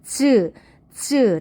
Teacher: 즈 닫았다 터지면서 마찰까지 일어난다. 그래서 파열과 마찰이 동시에 일어나는 것을 우리가 파찰음이라고 한다.